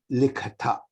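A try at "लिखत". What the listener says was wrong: Ta mahapranam nasti. Alpa prana.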